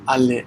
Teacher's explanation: This is a very front ah. It travels back from your L, which should stay up front.